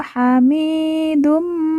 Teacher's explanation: Mi kita baca panjang dua harakat karena di depannya terdapat ya sukun atau ya mati